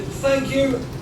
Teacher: The other TH sound is unvoiced, and that sounds like in thank you.